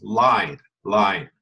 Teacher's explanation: L doesn't come through your nose